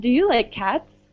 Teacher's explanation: my voice goes up at the end.